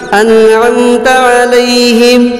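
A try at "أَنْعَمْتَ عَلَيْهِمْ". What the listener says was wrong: انعمت علیہم. علیہم.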